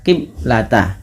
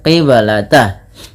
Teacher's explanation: ada bacaan qalqalah maka suara bnya harus dipantulkan · ada bacaan qalqalah, maka suara ba-nya harus dipantulkan. Kesalahan yang terjadi di dalam membaca bacaan qalqalah yaitu tidak memantulkan bunyi suara ba-nya.